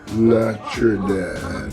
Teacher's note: the combination of letters T plus Y gives us the ch sound